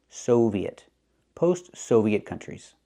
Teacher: I can't use the open ah sound like hot and stop. I need the long O like no and go.